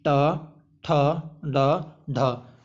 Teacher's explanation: ट ठ ड ढ बोलते समय हमारी जो जीभ है मूर्धा में टच होती है, इसलिए इन्हें हम कहते हैं मूर्धन्य व्यंजन या ध्वनि।